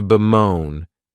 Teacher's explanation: this verb has two syllables and the stress is on that second syllable